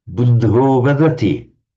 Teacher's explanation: In certain circumstances, this ah becomes an o in Sanskrit. Most particularly before a voiced consonant.